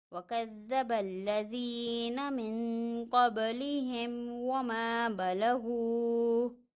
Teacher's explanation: میم ساکن ہے، میم ساکن کے علاوہ حرف آ رہا ہے واو، تو یہاں پہ اظہار شفوی ہو رہا ہے، غنہ نہیں ہوگا، میم کو ظاہر کر کے پڑھنا ہے